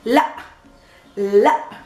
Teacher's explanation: Just making this glottal stop at the ending